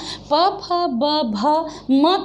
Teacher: ऐसा कहते समय हमारे लेबियल मतलब जो लिप्स हैं वो एक दूसरे के पास आके सट जाते हैं, इसलिए इसे हम ओष्ठ कहते हैं, ठीक है।